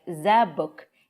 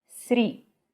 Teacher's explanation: expect the book to sound like zabuk and three to sound like sri